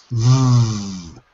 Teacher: I have to use my vocal cords and if I put my fingers here in the little Notch I can feel my vocal cords moving